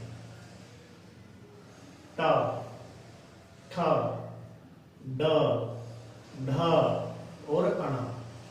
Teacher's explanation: तो इनका उच्चारण स्थान जो है वो है मूर्धा, ये मूर्धा है। तो इन ध्वनियों को कहेंगे मूर्धन्य, ठीक है, मूर्धन्य ध्वनि, ये हो जाएगी मूर्धन्य ध्वनि।